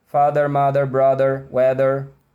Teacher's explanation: Não é morder de verdade não, é uma pressionada, né? E minha garganta vibra, a sua garganta tem que vibrar também.